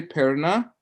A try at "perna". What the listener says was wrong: Oh, you're a non-roller?